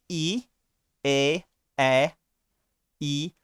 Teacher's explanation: When you say e, a, e, your mouth, your lips, they are not making a circle. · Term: unround vowel